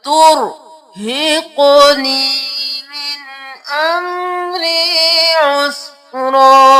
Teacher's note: را موٹا قاف موٹا اور قاف کو قلقلہ. ترهقنی من امری عسرا.